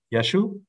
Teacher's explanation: if you want to have a really strong Galilean accent and say Jesus, you're gonna get Yeshu with two short vowels and no Ein · with two short vowels and no ayin